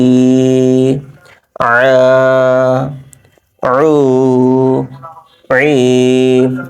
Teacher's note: আইন উচ্চারণ হয় এই গলার বা কণ্ঠনালীর মধ্যভাগ হতে। আইন, আইন আলিফ জবর আ, আইন অ পেশ উ, আইন ইয়াজের ই, আ উ ই।